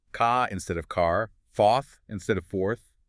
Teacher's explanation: The accent in the Delta is historically non-rhotic.